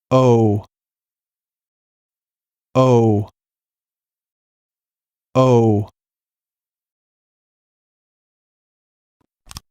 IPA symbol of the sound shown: oʊ